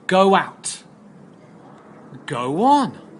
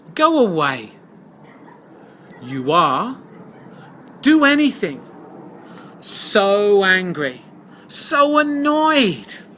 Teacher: is when you have a vowel sound and another vowel sound an o and a vowel sound and we insert a wha sound to connect the two sounds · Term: wha sound insertion